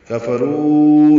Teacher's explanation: والذین جیسے پیچھے پڑھ چکے ہیں، کفروا را پر ہے، رو واو مدہ ہے، اور اس کے بعد دوسرے کلمے میں حمزہ ہے تو مد منفصل